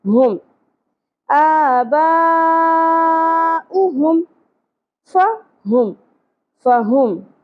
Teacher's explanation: ہا اقصی حلق سے ہوگا, ہا کی آواز نہیں آنی چاہیے, سانس کی آواز نہیں آنی چاہیے, ہم نہیں پڑھنا.